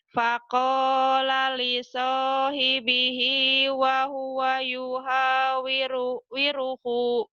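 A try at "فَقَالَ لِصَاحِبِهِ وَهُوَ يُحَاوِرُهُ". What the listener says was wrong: Ho-nya panjang tetap kalau dibaca apa adanya panjang.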